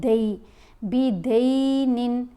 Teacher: دال کے اوپر زبر ہے ساتھ یا ساکن ہے تو یہ دوسرا لین حرف آ گیا